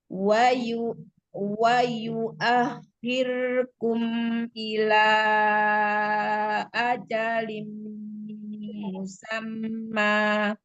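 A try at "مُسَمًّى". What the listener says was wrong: Jangan ada tekanan di bibir. Musamma.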